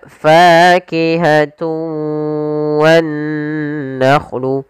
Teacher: idgham arti memasukkan dengan tidak sempurna ada yang kurang atau masih sedikit menyisakan suara nunnya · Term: Idgham naqis